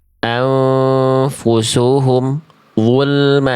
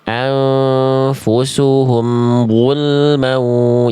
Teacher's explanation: Nah, itu bunyi ini nggak boleh putus. Karena mim punya sifat kayak ain, namanya tawassut. Jadi suaranya harus sedikit mengalir, ya.